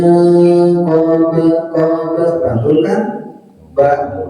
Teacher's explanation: qolah sugro mantul tapi tidak terlalu kencang q biasa gitu.